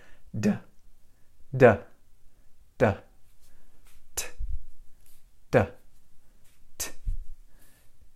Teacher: can you hear that there's no voice going on it's just the air